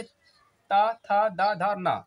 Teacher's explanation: ठीक है, फिर आपका ली आपका ला पलटते हैं इसको, ता से लेकर के ता वाला, ता से जितने भी आते हैं 5, जैसे ता, था, दा, धा, ना आया था, जो जितने भी आए हैं वो आएंगे आपका दंत से। ठीक है, यहाँ पर आपकी जो जीभ है ना आपकी दांत में टच होगी